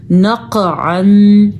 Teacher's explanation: قاف کو پر کر کے پڑھنا ہے کیونکہ حروف مستعلیہ میں شامل ہے. دوسرا قاف پہ ایک جھٹکا پیدا ہوگا کیونکہ حروف قلقلہ میں بھی قاف شامل ہے.